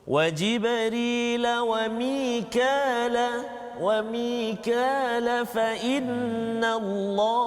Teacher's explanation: Kalau saya sambungkan bacaan, dia jadi mat asli 2 harakat saja.